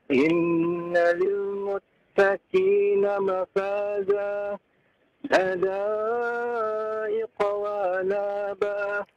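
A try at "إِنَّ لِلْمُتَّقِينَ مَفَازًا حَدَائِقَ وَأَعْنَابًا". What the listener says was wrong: Wa a'naba, ainnya Pak. Wa a'naba.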